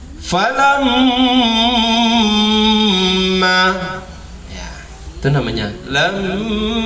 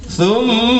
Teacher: Contoh, falamma, ya, itu namanya lamma, yang dengung itu. menahan dan mengeluarkannya di hidung. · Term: gunnah